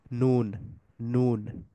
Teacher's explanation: জিহ্বার একেবারে সামনের অংশটুকু, সামনের উপরের দাঁতগুলার এই মাড়ির সাথে টাচ করে। নুন সামনের উপরের দাঁতের পেছনের যে তালুর অংশ, ওইটাতে টাচ করে।